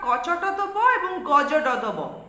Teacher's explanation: ফলে যে ধ্বনিগুলির উত্থিত শ্বাসবায়ু নির্গমনের পথ খোলাই থাকছে কোন বাধা সৃষ্টি হচ্ছে না অর্থাৎ হ ধ্বনি এই ব্যঞ্জন ধ্বনির উচ্চারণের সঙ্গে সংযুক্ত হচ্ছে না তাই এদের বলছে অল্পপ্রাণ ব্যঞ্জন ধ্বনি